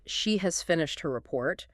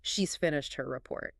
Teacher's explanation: In 95% of neutral conversation, the quick, contracted form maintains the flow. The difference between she has finished her report versus the quick, merged sound of she's finished her report. · Native speakers reduce the auxiliary have or has. We essentially swallow it down and link it immediately to the subject.